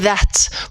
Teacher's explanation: si vous regardez ma langue elle va toucher un petit peu les dents les incisives ici et vibrer un petit peu